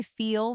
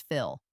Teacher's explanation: Notice the slight tension for feel and relaxation for fill.